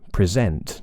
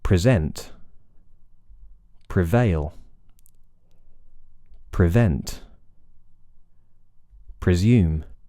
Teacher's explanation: It's a really short vowel. It's very weak, isn't it? But it is an I vowel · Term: kit vowel